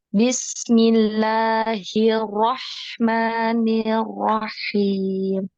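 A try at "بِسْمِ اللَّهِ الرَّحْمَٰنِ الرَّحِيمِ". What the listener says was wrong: Roknya ini ditasdid ya. Roknya ditasdid. Bismillahirrahmanirrahim gitu ya. Naik. Suaranya itu naik di nabar ya. Bismillahirrahmanirrahim. Jangan lupa harus sukun dialirkan. Rahman,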